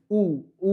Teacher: দেখো ঠোঁটগুলা ছোট হয়ে আসতেছে, সংকুচিত হয়ে আসতেছে, এই জন্য এটাকে বলা হচ্ছে সংবৃত।